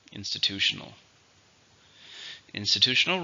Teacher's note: how many syllables institutional five let's stress in the third syllable